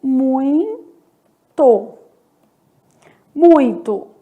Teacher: a vogal no ditongo é a primeira letra, porque ela vai ter uma pronúncia mais forte, sendo o ditongo decrescente